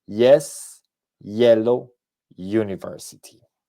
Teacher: esa u suena como una consonante y no como una vocal entonces por eso decimos a University y cuál es esa vocal